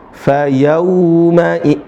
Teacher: Fayauma idzin pakai u bukan o.